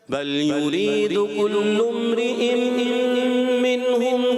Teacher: کلم پہ غنہ نہیں کریں گے، جلدی آگے بڑھ جائیں گے